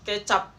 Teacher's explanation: Kalau akhir kata, kalau di akhir kata itu pengucapan fonem P itu tertutup seperti contoh kecap. Kecap tidak terlepas kan?